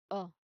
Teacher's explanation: You make the sound low and deep. Do not round your lips forward. Keep them relaxed.